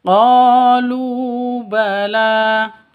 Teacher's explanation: qo panjang dua ketukan karena ada alif lam alif diawali dengan fathah qo mad asli atau mad thabi'i.